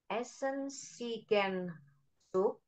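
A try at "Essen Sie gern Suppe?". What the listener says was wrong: noch einmal, kurang jelas. sup berarti supe. Supe,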